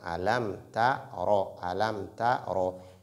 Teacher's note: Ta ro. Et la lettre ro, lorsqu'elle porte fatha, elle est emphatique.